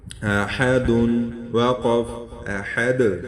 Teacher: اور اس کے آخر میں قلقلہ بھی ہوگا کیونکہ یہ حروف قلقلہ سے ایک حرف آئے ہے